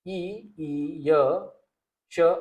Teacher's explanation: ई ई य श आणि पूर्ण च वर्ग, हा या वर्णांचा उच्चारण स्थान काय राहील? तालू.